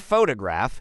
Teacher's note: in the word photograph the stress is on the first syllable